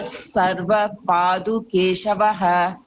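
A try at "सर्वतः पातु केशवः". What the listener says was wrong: Sarvatah patu, not do, patu. Sarvatah patu keshavah.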